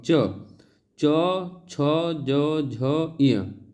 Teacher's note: च वर्ग का उच्चारण स्थान जो है वह तालू है